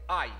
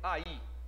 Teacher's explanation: se fosse falar ai estariam juntos mas eu falei aí Então essa palavra tem duas sílabas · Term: hiato